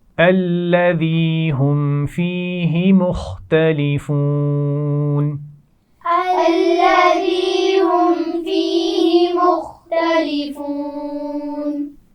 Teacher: الذی لام پر شد ہے، سختی سے پڑھا جائے گا. ذال نرمی سے ادا کیا جاتا ہے، آپ جانتے ہیں، مخارج میں آپ سیکھ چکے ہیں.